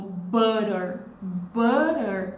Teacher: a gente tem o som de A no começo e no final a gente tem o schwa também, porque é a sílaba menos forte.